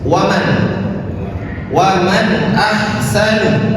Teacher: Pada kalimat ini ada nun sukun bertemu dengan hamzah, yang dimana hamzah ini adalah salah satu huruf izhar, maka cara membacanya jelas. Waman, waman ahsanu, bukan wana, bukan seperti itu, tetapi waman ahsanu.